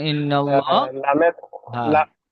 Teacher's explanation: আল্লাহর শব্দের পূর্বে জবর এসেছে তাই আল্লাহর লামকে পুর করে পড়তে হবে